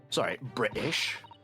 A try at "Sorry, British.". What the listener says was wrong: He'd be more Queen's English, not Cockney. Yes, you are. You're going. I think you put on your Sherlock voice for this.